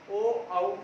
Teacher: ओ इसमें भी हमारे होठ गोल हो रहे हैं। ओ औ होठ जो है हमारे ओष्ठ जो है हमारे गोलाकार हो रहे हैं, वृत्तामुखी हो रहे हैं।